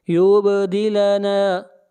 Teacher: با کے اوپر قلقلہ کریں گے، آواز کو ہلائیں گے